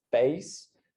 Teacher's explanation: someone in the South will have a face that starts lower and is more diphthongal